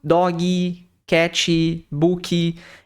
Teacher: palavras que terminam em consoante e que nós, como brasileiros, utilizamos um som extra no final dessas palavras